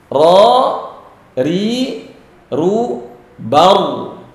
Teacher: Khusus untuk huruf ro ada sifat takrir, ada r.